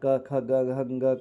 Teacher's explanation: कंठ से अ और आ का क ख ग घ का ह का विसर्ग का उच्चारण किया जाता है।